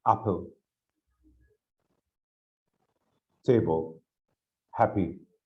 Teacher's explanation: two syllables noun and adjectives okay stress in the first syllable